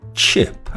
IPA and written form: tʃɪp (chip)